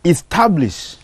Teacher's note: The word reads establish. So you put a stress on the second syllable.